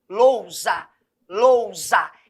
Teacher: Como eu tenho duas sílabas, eu consigo perceber que low, quando eu produzo low, eu produzo com maior intensidade, com maior força